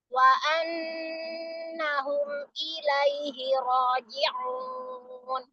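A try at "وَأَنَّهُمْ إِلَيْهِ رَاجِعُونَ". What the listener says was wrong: Oke, bagus. Lanjut.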